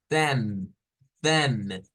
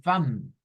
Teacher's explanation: el inglés Esta no es esta misma a nuestra es ae es un sonido intermedio entre la a y la e que es para el inglés por eso suena a them no es como decir fam es